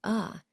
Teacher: Another important change to notice is how we often shift from a long vowel sound to the schwa sound, which is like an unstressed, quick uh. This change makes speech more fluent and less choppy.